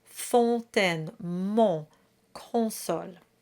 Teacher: we have the nasal on sound in each of the 3 lines.